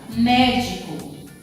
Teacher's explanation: então a sílaba tônica aqui é a antepenúltima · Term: proparoxítona